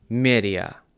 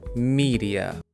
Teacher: Тобто замість е ми кажемо і.